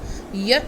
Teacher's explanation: जब हम य बोलते हैं तो हमारी टंग is touching the roof of our mouth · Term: पैलेटल साउंड